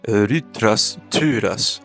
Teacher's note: the theta was pronounced t · the ypsilon was pronounced something like u, something in between u and e